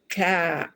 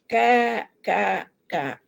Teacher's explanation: Ka ada hembusan. Kafirun ada hamas dia